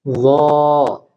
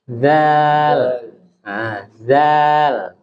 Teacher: Jadi huruf lo ini tebal, beda dengan zal. Kalau zal tipis.